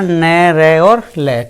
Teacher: वत्स व्यंजन होते हैं हमारे जिनमें हमारे जो जीभ होगी ऊपर वाले मसूड़े जाकर लगेगी, उसको हम वत्स बोलते हैं, ऊपर वाले मसूड़े क्या बोलते हैं, वत्स बोलते हैं, तो वे वत्स व्यंजन कहलाते हैं।